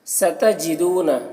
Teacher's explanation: یہاں پر واو مدہ ہے تو اسے ایک الف کے برابر کھینچ کر پڑھنا ہے، اور جس حرف میں زبر زیر پیش ہے اسے جلد پڑھنا ہے۔